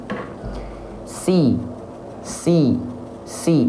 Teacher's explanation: lafalkan Sin huruf yang tipis lafalkan dengan senyuman dan pangkal lidah beserta Tengah lidahnya enggak naik